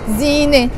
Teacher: So Zine, when it's alone, it has this T marbuta, the T sound that is mute, we don't pronounce it